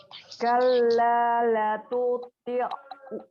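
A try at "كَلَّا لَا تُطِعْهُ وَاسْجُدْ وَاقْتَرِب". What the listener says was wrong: La-nya panjang. Kalla la. Dua-duanya panjang. La-nya panjang. Dua-duanya.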